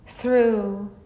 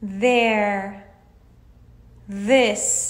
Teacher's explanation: در این حالت یه لرزشی رو تو تارهای صوتیتون احساس میکنین که میشه voiced TH